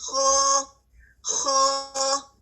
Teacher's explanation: اس کی آواز پستی تو ہے, اس میں لو ساؤنڈ تو ہے لیکن اس کے ساتھ ہیوی ہے, خو خو. ٹھیک ہے, اس وجہ سے اس کو ہیوی لیٹر بھی کہا جاتا ہے, اور اس کی اس ہیوینس کی وجہ سے اس صرف کو تفخیم بھی کہا جاتا ہے.